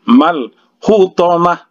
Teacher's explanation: Kalau dia di-stopkan di sini, ya, berbunyi huruf ha. Kalau dia diwasolkan dia berbunyi huruf ta. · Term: ta marbuthah